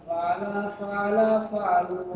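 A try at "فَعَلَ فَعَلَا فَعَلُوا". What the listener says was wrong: Oh, yang enak dong nadanya biar. Ulangi, jangan falas. Fa'ala fa'ala fa'alu.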